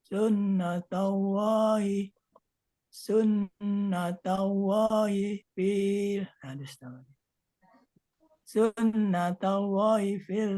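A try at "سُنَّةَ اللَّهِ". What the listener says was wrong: Yang panjang sunnya ditahan.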